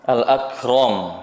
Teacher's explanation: khusus untuk huruf Kaf dan ta solusinya dengan diberikan sifat mengalirnya udara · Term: sifat Hamas